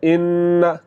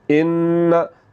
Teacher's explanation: तो यहाँ पर नून के ऊपर शद है तो नून को हम कहेंगे नून मुशद्दद। तो जो नून मुशद्दद है इसको पढ़ते हुए आवाज़ को नाक में ले जाकर थोड़ा सा लंबा करना है। आपने इस बात को याद रखना है कि जहाँ पर भी नून मुशद्दद होगा, जहाँ पर भी नून पर शद आ जाएगी, वहाँ पर हमने नून की आवाज़ को नाक में ले जाकर थोड़ा सा लंबा करना है।